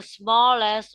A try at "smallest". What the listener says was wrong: One more time. Can I hear the sound t? Smallest.